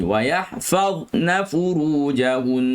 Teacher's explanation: keluarkan lidah di bawah untuk dha, letak bawah gigi